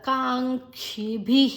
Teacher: ಭಿ ಮಹಾಪ್ರಾಣ ನಂತರ ವಿಸರ್ಗದ ಉಚ್ಚಾರಣೆ ಹಿ. ಇಲ್ಲಿ ನೋಡಬೇಕು ಬಿ ಹಿ ಬಿ ಈ ಬಂದರೆ ವಿಸರ್ಗದ ಉಚ್ಚಾರಣೆ ಹಿ ನಂತರ ಆ ಬಂದರೆ ಹ ಓ ಬಂದರೆ ಹೋ.